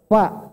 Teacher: Fa itu cuma 1 bibir Pak. Fa cuma 1 bibir. Bibir bawah ketemu gigi seri atas. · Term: huruf fa